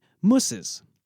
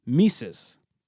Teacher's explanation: The original ooh sound which occurs in the back of the mouth shifted to an e sound which occurs in the front of the mouth. Thus placing it closer to the short i sound that occurs in the is suffix. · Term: Germanic umlaut